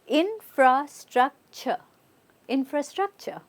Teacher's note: we're not saying ture, we're using it as a ch.